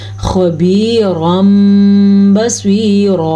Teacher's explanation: تنوین کے بعد با آنے کی وجہ سے ہم نے تنوین کو میم میں بدل دیا